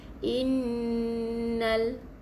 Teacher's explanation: Okey, lam yang mati, jadi tak boleh baca inna saja, masuk terus dalam lam yang bersabdu, abaikan tanda hamzah wasal ni. · Jadi ada sabdu, jadi kena baca dengan wajibal gunnah atau wajibul gunnah. Wajib dengung dengan dua harakat.